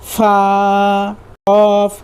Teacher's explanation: ऊपर के दांतों की किनारे और नीचे के होठ की तरी वाले हिस्से से अदा होता है।